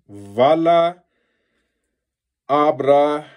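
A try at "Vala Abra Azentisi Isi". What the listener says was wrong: Azentisi, and then all you did was you forgot Isi at the end for that R. Vala Abra Azentisi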